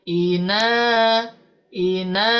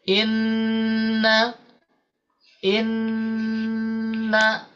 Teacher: A kalau nunnya dia tetap satu harakat nah tapi kalau ini dia tidak melamakan harakatnya tapi melamakan nunnya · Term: guna